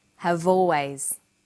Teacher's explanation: Notice how in conversation we link the final consonant sound v with the initial vowel sound or. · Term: linking